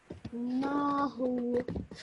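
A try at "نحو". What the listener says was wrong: Okay, the first bit was good. This bit, again, look at your timing. What does the ha have on top of it? Dhamma. It's a dhamma. How long do you pronounce the dhamma for? 1 second. So would it be who, like you said, or would it be who? Yeah, 1 second, okay?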